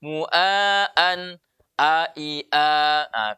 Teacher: Tanwin ketemu hamzah maka tidak boleh lagi berdengung.